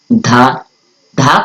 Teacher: धा को बोलते समय उच्चारण हो रहा है दांतों पे